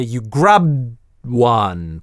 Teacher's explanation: пытаемся выговорить безрелизный /d/